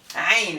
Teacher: Ain is a voiced pharyngeal fricative. The sound is made by contracting the muscle of the pharynx. so that the flow of air through the throat is partially choked off.